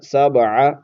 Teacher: با پر قلقلہ کریں گے